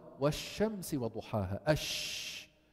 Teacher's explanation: ريح الهواء وكيف يطلع الصوت في ريح هواء ينتشر وهو شو انتشار صوت الشين في مخرجها حتى يصطدم وين بالصفحه الداخليه للاسنان العليا والسفلى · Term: التفشي